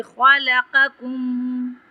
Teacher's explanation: خلقکم میں خا کو ہم تفخیم کریں گے، قاف کو تفخیم کریں گے، تفخیم مطلب موٹا پڑھنا۔